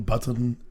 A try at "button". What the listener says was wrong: Don't say the T.